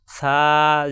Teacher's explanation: জিব্বার আগা দাঁতের আগায়